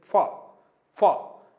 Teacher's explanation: ओष्ठ भी है और दांतों में भी जिह्वा जो है वो टच करने का प्रयास करती है। फ, इसको दंतोष्ठ कहा गया है।